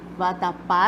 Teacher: Então, aqui em vatapá, nós verificamos que a sílaba mais forte recai na última. Então, a gente conta aqui, vatapá, a última sílaba é a mais forte, portanto, é oxítona.